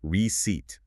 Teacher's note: >> You pronounce it receipt. The emphasis or the stress falls firmly on the second syllable.